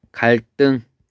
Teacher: 한자어의 받침 리을 뒤에서 디귿, 시옷, 지읒이 된소리로 바뀐다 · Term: 경음화